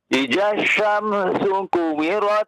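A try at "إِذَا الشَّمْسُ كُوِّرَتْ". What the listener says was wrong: Tahan ya. Di huruf wawunya itu tasydid juga ya. Idza syamsu kuwirat.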